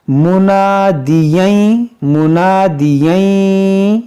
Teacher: تنوین کے بعد یا ہے تو یہاں پر ادغام کریں گے ، منادییں منادییں، اس طرح ناک میں جائے گی آواز، ییں